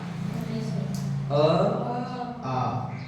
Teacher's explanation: कंठ स्वर, जो कंठ से बोले जाते हैं,